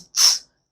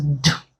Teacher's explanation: Consonant T is a voiceless consonant sound, while consonant D is a voiced.